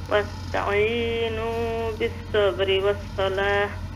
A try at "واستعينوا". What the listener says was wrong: জি, সিনের উচ্চারণ আরো একটু পাতলা করবা নেক্সট টাইম ইনশাআল্লাহ, সুন্দর হয়ে পারো। ওয়াস্তাইনু, আমরা বাংলাদেশে যত উস্তাদ হলে পড়াইতে হইতা, সিনের উচ্চারণ হলে চড়ুই পাখির আওয়াজ আল্লাহ।